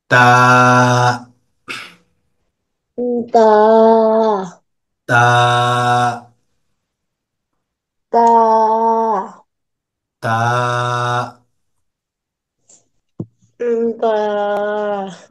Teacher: সাথে লাগবে দিতে। ঠিক আছে, জিহ্বার আগা উপরের দুই দাঁতের গোড়াতে লাগবে।